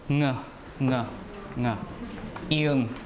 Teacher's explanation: Nasal, the air comes through the nose, so it has to be either M, N, or N with the tail, right? This one is velar, so it has to be the N with the tail. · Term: voice velar nasal